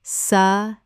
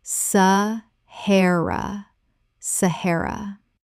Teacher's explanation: 3 syllables with the stress on the second.